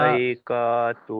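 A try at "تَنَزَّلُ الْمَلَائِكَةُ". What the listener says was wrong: টান হবে না, তানাজ্জালুল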